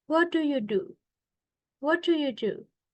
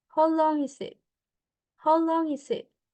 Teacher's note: so in open questions uh we usually use a falling intonations